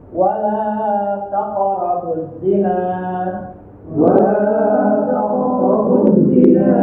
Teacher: Perhatikan huruf qaf yang sukun itu dibaca memantun